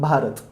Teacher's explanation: जर ह्यात आता 1 युनिट कन्सिडर करायचं झालं, र म्हणायला जर एक युनिट लागत असेल, ओके. तर भा म्हणायला तर 2 युनिट लागतात. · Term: मात्रा